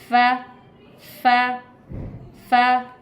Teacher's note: फा के लिए हमने ऊपर वाले दांतों को नीचे वाले होंठ के अंदरूनी हिस्से पर टच करना है